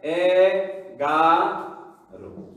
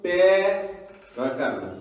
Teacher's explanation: দেখো শেষের নিয়মটা দেখো 6 নম্বর, 11 থেকে 18 পর্যন্ত সংখ্যাবাচক শব্দের অন্ত অকার সাধারণত ওকার উচ্চারিত হয়।